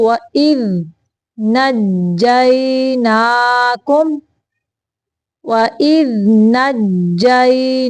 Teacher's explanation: کلکلا نہیں کرنا دال کو